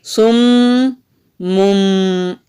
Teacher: تنوین کی آواز کو میم میں بدلنا ہے، پھر اس کی آواز سم مم، یہ دو آوازیں ہو گئیں۔